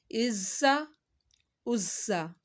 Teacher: زا کی سیٹی نکالنی ہے